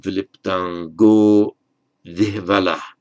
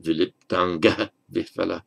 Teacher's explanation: In this compound, it ends in an O. The general rule of sandhi, ah, before a voiced consonant, and here it's a v, voiced consonant, becomes O.